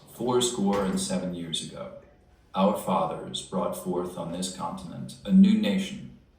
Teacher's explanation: I'm going to do it with some creak in my voice.